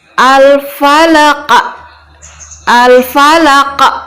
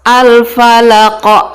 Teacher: pita suara itu menjadi tertutup karena seolah-olah tadi ada huruf hamzah yang disukunkan. Harusnya al-falaq biasa saja.